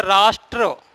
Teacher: उदाहरण के तौर पर देखिए, शब्द है राष्ट्र, ट्र पे ध्यान दो। ट्र बोलते समय रा की ध्वनि है और जिह्वा हमारी कंपन कर रही होगी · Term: पदेन रा